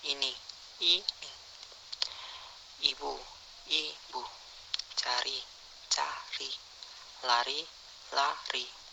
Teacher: Berdasarkan keempat kriteria yang dibicarakan tersebut, maka nama-nama vokal dapat disebutkan sebagai berikut. Vokal I. Kriteria: vokal depan, tinggi atas, tak bundar, tertutup.